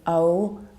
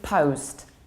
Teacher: in English you need to round it it's Oh like globe